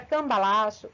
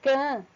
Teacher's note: esse M, que forma o som can, ele sai anasalado. Por esse motivo, esse som de M, ele sai da boca como se fosse um acento tio em cima do A.